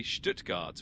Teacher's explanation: It's basically Stuttgart with a bit of that German sh sound at the start